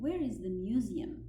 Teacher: the information question with where has falling intonation فيها نغمة منخفضة.